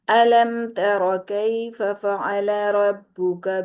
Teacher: علم ترا نہیں کیا، علم تر جلدی سے پڑھ دیا، میم کو ادا کیا اور ساتھ ہی تاب کو پکڑ لیا۔ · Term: اظہار شفوی